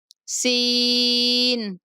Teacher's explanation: سیٹی جیسی آواز کے ساتھ بولیں گے